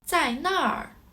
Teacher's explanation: 那 儿 more appears in the oral Chinese, but has the Rhotic accent.